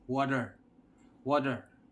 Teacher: Filipino we pronounce water as water the T sounds T but in the other country you might hear them say water water the T sounds like d